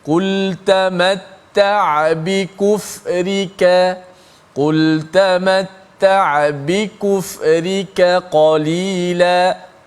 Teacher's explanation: Kita jaga sifat kaf yang nipis dan kekalkan sifat qaf yang tebal.